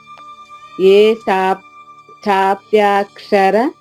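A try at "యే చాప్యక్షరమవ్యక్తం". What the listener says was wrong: చాప్య పాకి ఆకారం లేదు. చాప్య ఏ చాప్యక్షర.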